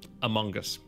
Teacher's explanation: You're pronouncing the G really hard, and pronouncing the O as like an O sound instead of a schwa.